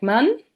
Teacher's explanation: the open front unrounded vowel um is pronounced in words like man as I just explained for the consonant M.